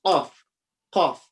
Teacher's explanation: I'm talking about this back part of your tongue. The back part where your tongue finishes. The furthest you can go. That's where Qaf comes from. So when this part of your tongue touches the exactly top, right on top, the palate right on top, okay?